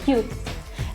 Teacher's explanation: pronounced as English u but shorter